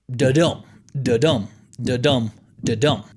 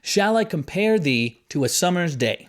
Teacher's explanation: the way that a line rhythmically flows together it sounds kind of like a heartbeat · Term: I Amic pentameter